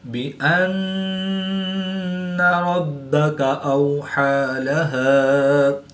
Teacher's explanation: با مشدد ہے تو یہاں پر قلقلہ خوب جماؤ کے ساتھ کریں گے، اس کو قلقلہ کبرا بھی کہتے ہیں۔ واو ساکن سے پہلے زبر ہے تو واو لین اس کو لمبا نہیں کریں گے